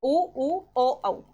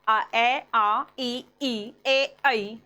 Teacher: वृत्ताकार में आपके होठ गोल होंगे। अवृत्ताकार में होठ गोल नहीं होंगे। यानी कि फैल जाएंगे। उ ओ औ। जैसे ही बोला होठ गोल हुए। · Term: वृत्ताकार और अवृत्ताकार